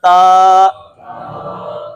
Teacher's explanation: پڑھیں ذرا، تا۔ اب نہ اس میں زبان کی جڑ کو اٹھانا پڑا، نہ اس کو سختی کے ساتھ پڑھنا پڑا، نرمی کے ساتھ اور اپنی حالت میں سکون کے ساتھ، تا۔